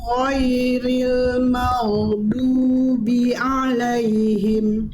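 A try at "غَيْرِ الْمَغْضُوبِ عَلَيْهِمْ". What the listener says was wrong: Sip, Bunda tinggal sempurnakan goin sukunnya. Goinnya makhrajnya udah bagus. Cuman di goin sukun pada kalimat maghdu masih ada mantul dikit. Ya. Jangan sampai mantul.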